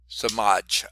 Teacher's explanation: Accent on the second syllable